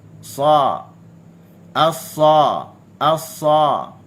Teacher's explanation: Huruf sa ni huruf yang tebal, bersifat dengan isti'la, pangkal lidah terangkat dan juga dia ada itbaq.